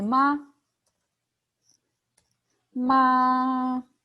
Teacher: make it short without pronouncing the tone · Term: neutral tone